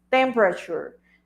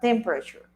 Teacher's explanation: The first syllable is the one that has the stress